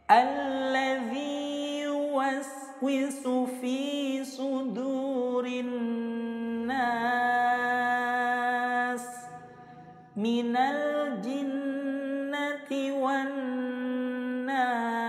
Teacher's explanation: nun bertasydid hukumnya adalah gunnah musyaddadah, cara bacanya didengungkan selama 2 harokat. Kemudian waqaf pada kalimah annas, di sini hukumnya adalah mat arid lisukun.